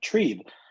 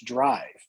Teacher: And then there is a Trieb, which Trieb is directly cognate with our English drive. All you have to do is vocalize the initial dental consonant and change the vowel, and then fricativize the labial.